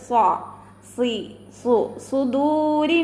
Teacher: സ്വാദ് ഉയർത്തി ഉച്ചരിക്കുന്ന അക്ഷരങ്ങൾ പെട്ടതാണ്. ഇവിടെ സീനായി പോവരുത്.